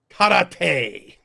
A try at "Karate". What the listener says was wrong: You didn't roll your R's enough. Karate.